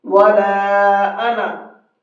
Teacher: صرف انا کا لفظ جہاں پر ہوگا وہاں پر الف نہیں پڑھا جائے گا، انا جلدی پڑھیں گے اس کو۔ وَلَا انا، کھینچنا نہیں ہے۔